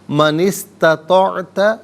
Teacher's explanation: من میں نون کے نیچے زیر ہے، اسے استطاعت کی سین ساکن کے ساتھ ملائیں گے، درمیان میں سے الف یعنی حمزہ کو حذف کریں گے۔